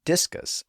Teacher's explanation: discus puts the stress on the first syllable